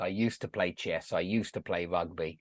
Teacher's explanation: I would never pronounce the d